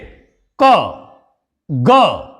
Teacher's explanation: हमारे मुख से वायु बहुत कम मात्रा में यानि कि अल्प मात्रा में बाहर निकलेगी इसीलिए यह कहलाएंगे हमारे अल्पप्राण तीनों का उच्चारण करके देख लीजिए